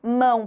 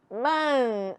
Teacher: É o som da vogal que se prolonga. Eu não escuto o som da consoante. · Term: ditongo nasal